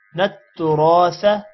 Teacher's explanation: نون تا کے ساتھ ملے گا شد کی وجہ سے. تُرَاثَ را موٹا ہوگا اور الف آ رہا ہے جس کی وجہ سے تھوڑا لمبا کریں گے.